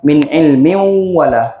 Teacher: so bunyi Min ni masukkan terus kepada huruf wau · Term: maal maunah